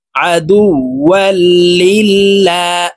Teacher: আল্লাহ শব্দের আগের হরফে জের আছে, এই কারণে এই লামকে লা বলে অর্থাৎ পাতলা ভাবে পড়তে হবে